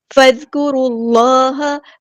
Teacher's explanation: اللہ کا جو لام ہے یہاں پہ ہیوی موٹا ادا ہوگا، اور حمزۃ الوصل ہمارا ڈراپ ہو جائے گا.